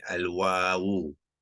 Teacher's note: Jadi wow tu kena panjang 2 harakat, ya. Jadi wow tambahan, ya.